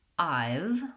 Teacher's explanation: which is just two sounds, it's the diphthong I and the consonant sound V, they'll just try to say I have, and squish those two words together.